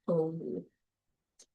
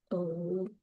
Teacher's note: It's a mid-back vowel. It is tense, O, and it is rounded.